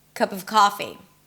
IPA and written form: kʌp ʌv ˈkɑfi (cup of coffee)